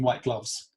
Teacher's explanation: the k instead of the t at the end of white gloves